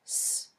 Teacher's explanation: You can't feel any vibration. That tells you that s is a voiceless sound. In our diagram, there's no red line.